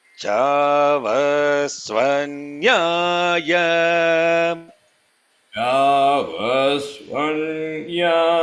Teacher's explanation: Chavasva, all those are anudattas. Nya, suddenly jumps to Swaritam.